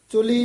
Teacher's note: ਚੁਲੀ ਪੋਲਾ ਹੀ ਉਚਾਰਨ ਕਰਨਾ ਚੁੱਲੀ ਨਹੀਂ ਕਹਿਣਾ ਹੈ।